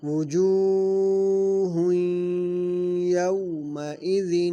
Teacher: وجوہ کی واو جو ہے، جو کی واو مدہ ہے، اس کو لمبا کر کے پڑھیں گے۔ یومئذ کی واو جو ہے یہ واو لین ہے، اس کو کھینچیں گے نہیں۔